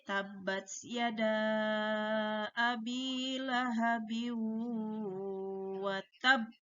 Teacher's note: Kalau qalqalah sugro dan qalqalah kubro langsung dipantulkan, tetapi berbeda dengan qalqalah akbar. Qalqalah akbar itu berhenti sejenak sekitar 1 detik baru dipantulkan.